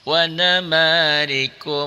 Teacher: Wa nama manya matobi'i patah dengan alif, rinya rohnya dibaca tipis karena baris di bawah